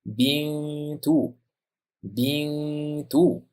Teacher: n ni t ning chiqadigan o'rniga yashirib, chaynalib talaffuz qilishimiz kerak, ya'ni ixfo qilib o'qishimiz kerak.